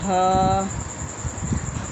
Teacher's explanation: حلق کے آخر سے جو سینے کی طرف ہو